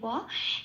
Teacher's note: বয়ের উচ্চারণ ও প্লাস অ ওয়া, ঠোঁটটা খুলে বলতে হয় ওয়া